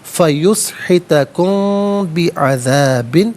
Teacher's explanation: فیسحتکم میں میم ساکن کے بعد با آ رہا ہے تو میم ساکن کو غنّے کے ساتھ پڑھیں گے